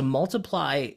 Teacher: So it's stressed, unstressed, and then a weaker stress, but it's still stressed.